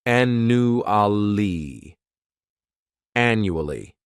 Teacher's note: This word has 4 syllables, and the stress is on that first syllable. The second syllable, it's like you're just saying that letter U, and the third syllable has that schwa, annually.